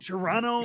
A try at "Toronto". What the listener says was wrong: You don't say the T.